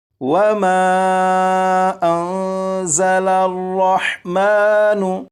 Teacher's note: اب یہاں پر دیکھیں یہ نون ساکن ہے، اس نون ساکن کے بعد زا ہے، لہٰذا اس نون ساکن میں اخفاء کے قاعدے کے مطابق غنہ کر کے پڑھیں گے، اور یہ جو زا ہے اسے سختی سے پڑھیں گے، یعنی سیٹی کی آواز کے ساتھ۔ اب یہاں سے یہاں تک 3 مرتبہ میں اور 4 مرتبہ آپ پڑھیے گا۔